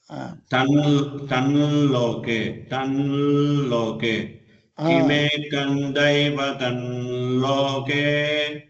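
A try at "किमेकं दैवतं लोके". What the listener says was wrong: ரொம்ப இழுத்து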